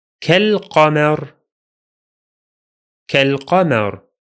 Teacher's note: Only the alif is silent because we are in connected speech again, while the lam is pronounced because it's lunar this time.